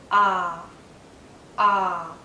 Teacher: my tongue is low inside my mouth low and a bit forward so that the tip does touch the back of my bottom front teeth